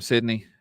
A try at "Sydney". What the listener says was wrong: No, the way you pronounced Sydney just sounded like you said Sunny or something.